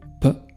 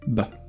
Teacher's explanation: The first is voiceless, the second is voiced.